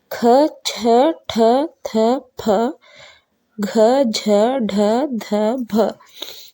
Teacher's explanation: ಛ ಠ ಥ ಫ ಘ ಢ ಧ ಭ ಇವು ಮಹಾಪ್ರಾಣ ಅಕ್ಷರಗಳು ಇವಕ ಹೆಚ್ಚು ಉಸಿರುಬೇಕು ಹೊಟ್ಟೆ ಒಳಗಿಂದ ಉಸಿರು ಬರಬೇಕು